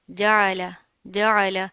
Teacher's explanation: جین میں آپ نے چے کی ساؤنڈ نہیں لانی، آئین کو بھی پروپر واضح کرنا ہے.